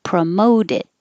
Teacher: The T in promote changes to a D because now we're connecting it to it. Promote it, which I thought sounded a lot like promoted.